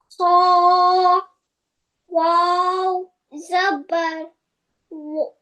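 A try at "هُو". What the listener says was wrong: Don't round your lips when you read zabar. Open your mouth and raising your voice like wow, zabar.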